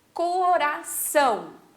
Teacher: o são, a gente fala mais forte, mais intenso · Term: sílaba tônica